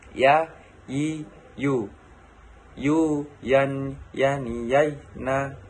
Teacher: Merupakan huruf ya keluar dari tengah lisan disentuhkan dengan langit-langit.